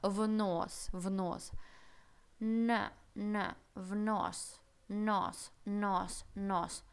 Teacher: Здесь у нас абсолютно мягкий, обволакивающий н. Никакого нос мы не говорим. Мы говорим немножко в нос.